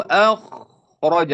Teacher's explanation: نفخم درجة أعلى لأن الساكن قبله فتح